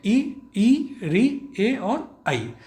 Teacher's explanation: अब जब आप इन्हें बोल करके देखेंगे साथ साथ में, तो देखेंगे आपकी जो जिह्वा है वह आगे की तरफ आ रही है इन्हें बोलते समय · अग्रस्वर वे हुए जिन्हें बोलते समय आपकी जिह्वा का अगला भाग जो है वह सक्रिय होता है, या आगे का जो भाग है अगला भाग वह प्रयत्न करता है।